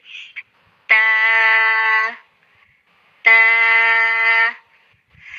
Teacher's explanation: ہماری جو زبان کی نوک ہے وہ ہمارے سامنے والے جو اوپر والے دانت ہیں ان کی جڑوں میں لگے گی۔ سامنے والے جو دانت ہیں دو اوپر والے ان کی جڑوں میں لگے گی۔